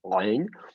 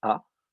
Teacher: Le aïn, qui normalement, on resserre bien la gorge, aïn, devient un petit coup de glotte, a. On bloque un petit peu le passage de l'air et à peine.